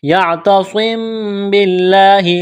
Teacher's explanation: لفظ اللہ کے نام سے پہلے زیر ہے، باریک کرنا ہے لفظ اللہ کے نام کو